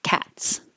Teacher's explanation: The last sound in the word cat is a T, which is voiceless. So it will look like an S and sound like an S.